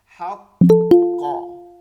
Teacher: দুইটা কফের উচ্চারণ কলকলা বেশি হওয়ার কথা তো এটা বেশি হইতে হবে হাক ক এভাবে একদম উচ্চারণটা বের